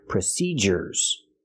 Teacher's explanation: procedures has a different sound we use the hard J sound like in juice and jump